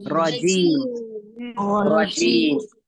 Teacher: रॉ को हमने रजीम मोटा पढ़ा